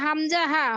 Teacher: হলকের শুরু হইতে হামজা হা